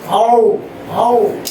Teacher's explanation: आओ ऊपर से जाके नीचे आता है, आओ आओ, मतलब आपके मसूड़ों पर और उसके जबड़ों पर काफी दबाव पड़ता है, आओ, और उसके बाद ये आता है अंत में ओ।